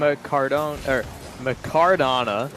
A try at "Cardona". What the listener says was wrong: I believe the M is silent. I believe he refers to himself as Cardona.